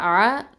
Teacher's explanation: ஐன் ஃபதா அ, இது நடுத்தொண்டை வசத்துல் ஹல்கு